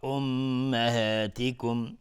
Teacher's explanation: امهاتکم میم مشدد 2 حرکت غنه میدیم